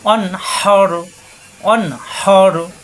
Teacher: অজবর অমেলবে নুনের সাথে নুন সাকিনের পরে হা, কণ্ঠনালী যে সাফ হা, এখানে নুন সাকিনের পরে হা স্পষ্ট হবে, কোনো গুণ্য হবে না।